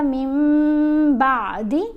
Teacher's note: اقلاب کا اصول ہے، اقلاب کا قاعدہ کیا ہے کہ جب نون ساکن ہو یا نون تنوین ہو اور اس کے بعد با آ جائے، نون ساکن یا نون تنوین کے بعد، تو پھر ہم نے نون کی آواز کو میم کی آواز میں بدل کر پڑھنا ہے